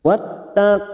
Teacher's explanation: Wattaqullah, masuk pada huruf ta yang bertasdid wattaqullah. Lam jalalah yang sebelumnya duma kita baca tafkim sambil kita wakafkan 4 harokat kita panjangkan.